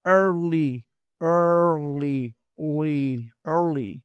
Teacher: El sonido de la E abierta, que ya no sería una E sola, sino la R, influye mucho en el sonido y este es el inglés americano. Entonces sería early, early, early.